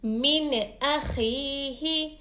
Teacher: یا ساکن سے پہلے حرکت زیر ہو تو یا مدہ ہوگا. یا مدہ کو ایک الف کی مقدار کھینچ کر ادا کریں گے